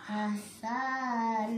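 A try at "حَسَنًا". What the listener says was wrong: Sanya juga enggak panjang. Hasana gitu.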